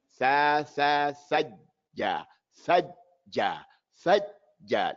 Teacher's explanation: We don't want to go from the tha to the jim without hearing the fatha, and the fatha has a length of time.